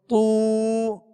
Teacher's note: طا طا طی، آواز کو گرا دیں گے تاکہ معروف ادا ہو، اگر تے پڑھیں گے تو یہ مجھول ہو جائے گا۔ طی تو، اب الٹا پیش ادا کرتے ہوئے ہونٹوں کو کامل گول کریں گے